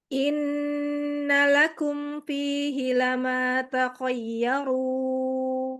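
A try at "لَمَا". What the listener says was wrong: Lama, lama. Lama fihi lama. Enggak ada perlu ditekan ya. Di situ anak kira tadi lamul jar. lama biasa saja.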